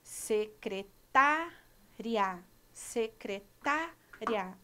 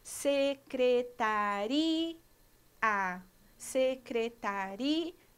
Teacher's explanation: Secretária, secretária. Olha o som vocálico do I e do A juntos, um ditongo.